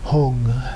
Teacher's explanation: the root syllable ha, vowel u, and then the nasalization of that. Hong. In Sanskrit, it would be hum, H-U-M, but in Tibetan they changed the end to an ng sound.